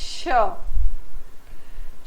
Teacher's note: कठोर तालू और जीभ के आगे के भाग के बीच में संघर्ष होता है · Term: संघर्षी व्यंजन